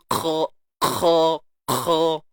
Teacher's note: Okey, dan kha jangan lupa tebal selamanya. Huruf isti'la, terangkat pangkal lidah.